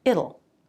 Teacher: It will becomes it'll with a flap T. This is just like the word little without the L.